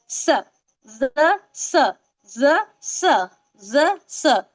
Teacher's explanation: जुबान की नोक नीचे के जो दांत है उसके किनारों से लगेंगी तो ज निकलता है · अंदर अंदर के ठीक है उससे लगेगा तो फिर स निकलेगा लेकिन ज में थोड़ा फोर्स निकल रहा है स सीटी के साथ सॉफ्टली